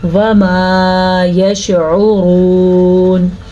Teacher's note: را کو پر پڑھنا ہے کیونکہ را کے اوپر پیش ہے. جب را کے اوپر زبر یا پیش ہوگی تو را پر یعنی کہ موٹی پڑھی جائے گی، اور اگر را کے نیچے زیر ہوگی تو را باریک پڑھی جائے گی.